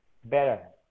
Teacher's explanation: T-nya itu berubah menjadi disebut dengan glottal stop.